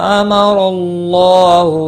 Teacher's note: ما مد منفصل ہے، تین الف کے برابر کھینچ کر پڑھیں گے۔ را زبر کی وجہ سے پور پڑھا جائے گا، اللہ کا لام بھی پور پڑھا جائے گا زبر کی وجہ سے، اور کھڑی زبر بھی ہے، ایک الف کے برابر کھینچ کر پڑھیں گے۔